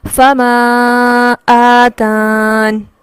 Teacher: فما آتان، وقف اس صورت میں ہوگا، یا ٹوٹلی ڈراپ ہو جائے گا اور نون کی حرکت کو ساکن کر دیا جائے گا